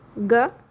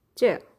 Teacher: आपका दंत्य में हो जाएगा त, कंठ्य में हो जाएगा ग और तालव्य में हो जाएगा च